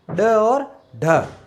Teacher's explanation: उच्चारण में जीवा की नोक झटके से नीचे गिरती है, तो हम क्या कहते हैं, उत्सिप।